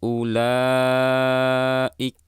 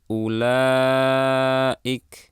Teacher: hamzah makhrajnya di pangkal tenggorokan, sifatnya syiddah. Jadi pastikan tekanannya terdengar.